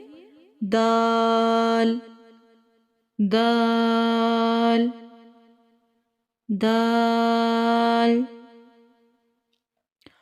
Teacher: जुबान की नोक जब ऊपर सामने वाले दो दांतों की जड़ से लगे तो इससे दाल अदा होता है